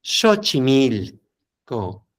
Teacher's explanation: obviamente en la parte de esto, pues ya podemos ubicar el que su pronunciación no va a ser acentuada ni decir fuerte el co, sino lo primero es el xochitl, luego el mili y al final el co, pero acentúas más en el mili. Entonces, xochimil y suavecito el co.